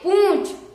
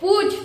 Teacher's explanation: इसमें हम पु का उच्चारण तो गले से करेंगे और जो चंद बिंदी है उसका उच्चारण नाक से करेंगे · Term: अनुनासिक